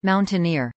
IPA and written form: ˌmaʊntənˈɪɹ (mountaineer)